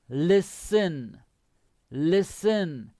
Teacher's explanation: the pronunciation the t is silent